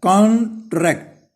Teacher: कॉन्ट्रैक्ट when noun होगा तो कॉन जो है CON, इस पे जो है आपने जोर देना है